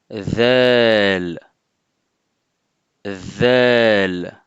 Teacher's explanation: c'est un son qu'on fait en plaçant le bout de la langue en appui sur l'extrémité des incisives supérieures, donc des dents supérieures, comme pour la lettre Tha. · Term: le son the, vel